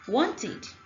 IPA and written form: wɒntɪd (Wanted)